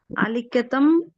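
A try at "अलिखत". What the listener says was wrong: அலிக்கத்த, வந்து ஹிந்தி கிடையாது. This is not Hindi. Hindi you stop. Ram you will say. Sanskritam it is Rama, like that.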